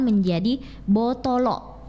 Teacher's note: bahasa Bugis itu akan jadi botolo ditambah glotal di belakang